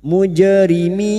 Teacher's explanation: Jim sukun yang mati asli di tengah kalimat qalqalah sugra. Jangan lupa dipantulkan.